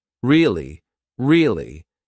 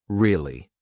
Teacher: to show that you're not so interested in the conversation with downward intonation